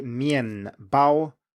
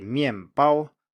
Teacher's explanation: That is because the first sound in the second syllable is a B, and that is a bilabial plosive. It's pronounced with both lips.